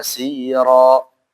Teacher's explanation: Ingat rnya di sini jangan monyong ya asaro dan juga dia tafkhim karena dia fathah